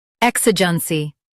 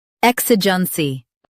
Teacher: U.S. stresses EK, while UK stresses I.